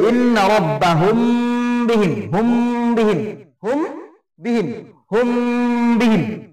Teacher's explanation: মিম সাকিনের পরে যদি বা দেওয়া থাকে তাহলে কি হবে? ইখফা শাফবি হবে ইন্না রাব্বাহুম বিহিম, হুম বিহিম, হুম বিহিম, হুম বিহিম, এটাকে এক আলিফ করে টেনে পড়তে হবে।